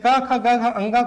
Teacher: क ख ग घ अ ङ को हम पढ़ेंगे तो यहां पर जो हमारा उच्चारण होगा वो कंठ से होगा या कंठ पर सबसे ज्यादा प्रभाव पड़ता है।